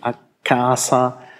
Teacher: a casa ist die richtige Aussprache mit einem langen K